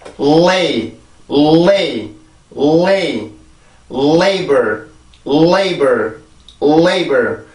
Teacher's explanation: L 발음을 위해서 치조를 누르고 있는 혀의 힘을 더 강하게 주고 목에서 올라오는 성대 울림을 강하게 만들어주면 돼요. 그러면 앞에 L 발음의 순수한 소리가 강하게 나오게 돼요.